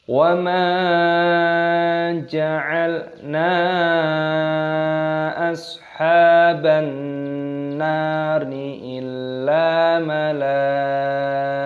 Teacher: Ashaban nari, alif lam idgham samsiyah, nunnya berharokat tasdid, maka didengungkan. Ashaban nari, panjangkan nunnya, ada tanda alifnya, matobi'i 2 ketukan.